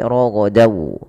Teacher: Surah tanwinnya masuk ke huruf setelahnya. Kalau huruf setelahnya wau, maka masukkan tanwinnya ke wau dan ditahan dan dibunyikan dengan huruf wau. Suara nunnya hilang. Raghodan menjadi roghadau. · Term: idgham bighunah, idgham bi gunnah